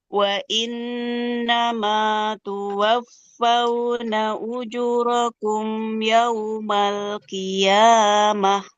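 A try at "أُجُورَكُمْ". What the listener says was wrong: Ujurakum. Jimnya juga sempurnakan dua harokat ibu.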